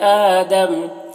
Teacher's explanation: یہاں پر وقف کریں گے تو آدم پڑھیں گے، میم کا زبر سکون سے بدل جائے گا